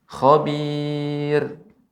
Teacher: Terakhir yang khabir tipis karena sebelumnya huruf berharokat kasrah.